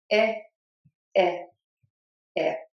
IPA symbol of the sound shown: ɪ